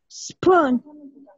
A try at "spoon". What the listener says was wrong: Perfecto. ¿Una vez más?